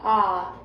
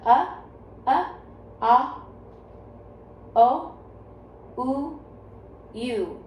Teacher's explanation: So as our chin goes up and down, the sound moves from the front to the back of our mouths. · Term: vowel valley